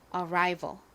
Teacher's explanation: 이 ry 부분에 강세가 있어요.